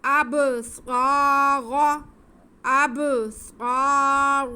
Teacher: را پہ زبر ہے تو را موٹا پڑا جائے گا